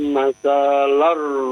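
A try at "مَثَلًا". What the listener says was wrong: Masalar. Jangan saknya jangan dipanjangin, saknya pendek. Pendek saja ya. Bapak baca jangan terlalu panjang-panjang ya. Pendek saja. Wadrib lahum masalar rajulain.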